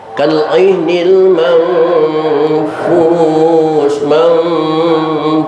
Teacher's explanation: M, itulah contoh ikhfa ausat. Ketika tanwin ketemu fa, itu suaranya suara M.